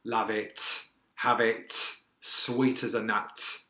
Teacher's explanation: Danny Dyer lands quite hard on those final consonants and he slightly aspirates them as well, meaning there is a expulsion of air after that final T.